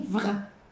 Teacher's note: A gente tem um som frontal com um som gutural. Gutural é o som do R, lá na garganta.